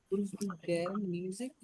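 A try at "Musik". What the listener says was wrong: মুজিক not মিউজিক, মুজিক।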